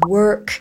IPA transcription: wɜːrk